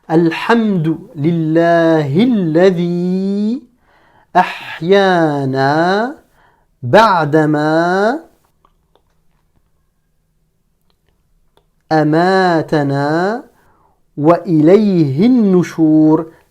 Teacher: entre lillahi et alladhi, on est passé directement du ha, du hi, au lam ici qui porte la shadda. Donc on n'a pas prononcé le alif. Parce que ce alif est un alif de liaison qui ne se prononce pas.